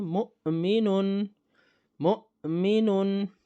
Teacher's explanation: یعنی حمزہ ساکن کا مخرج ہوگا، مخرج کی آواز آئے گی فوراً